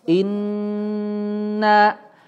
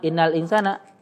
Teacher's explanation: Ingat teman-teman ketika ada nun, ada huruf mim yang bertasydid ya gunnah musyaddadah ya. Alirkan udaranya merongga hidung dan ditahan dulu ya. Inna. Jadi jangan innal insana ya seolah-olah tasydidnya dihilangkan tuh ya.